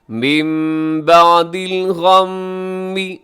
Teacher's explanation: نون ساکن کے بعد با ہے تو ہم کیا کریں گے، نون ساکنی کو میم سے چینج کر دیں گے، یہاں اقلاب کریں گے۔ من بعد الغم، آگے بھی میم مشدد ہے، غنہ کیجیے گا۔